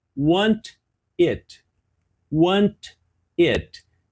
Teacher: esse T pode ser omitido ou pode ser ele pode ser suavizado por exemplo want it